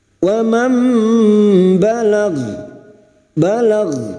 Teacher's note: Membalik seperti bertemu mim namun siap membunyikan huruf depannya yaitu huruf ba dan mendengung selama 3 harakat. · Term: iqlab